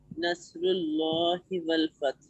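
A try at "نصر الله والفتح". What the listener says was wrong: بس یہ, جزاک اللہ.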